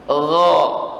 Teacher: Gha bukan go tapi gha. Gha dari ujung tenggorokan. Gha bukan go, bukan go tapi gha.